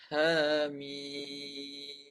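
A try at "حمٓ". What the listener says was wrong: Panjang lagi. Mim tu panjang lagi. 6 harkat. Mim. 1, 2, 3, 4, 5, 6. Sampai 6 baru masuk mim. Ya tu panjangkan 6 harkat.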